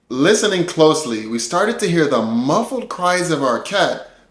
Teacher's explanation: Words like started, here, and muffled are stressed. Words like we, to or the are less stressed and we can pronounce them quickly or reduced.